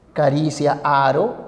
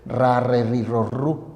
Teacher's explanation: Entonces se produce en este movimiento una vibración del aire cuando pasa. Esa vibración puede ser simple, una sola vez, caricia, aro, o puede repetirse, puede ser varias veces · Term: vibrantes